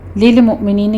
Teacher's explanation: لام کے پر جھٹکا نہیں دینا، حمزہ پر جھٹکا ہے